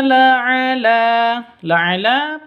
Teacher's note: laala laala panjang dua ketukan karena ada tanda berdiri di atasnya